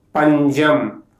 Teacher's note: When the letter sa occurs after nasal, it pronounces as ja.